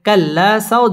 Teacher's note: একালিফ টেনে পড়তে হবে। কাল্লা সাও জবরের বাম পাশে জজম ওয়ালা ওয়াও লিনের হরফ তাড়াতাড়ি পড়তে হবে এবং ওয়াও ঠোঁট গোল করে উচ্চারণ করতে হবে